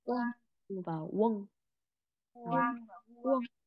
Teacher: miền Nam có thể nói hai cái âm này sẽ thành giống nhau này